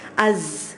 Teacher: There's a whistling sound in az.